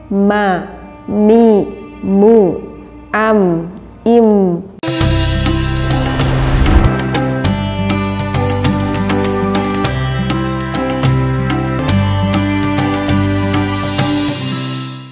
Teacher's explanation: Makhrajnya mim keluar dari bainas syafatain, artinya di antara dua bibir kita.